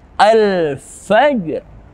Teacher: alif lam bertemu dengan fa. Hukumnya adalah izhar qamariyah. Wajib kita baca alif lamnya dengan jelas.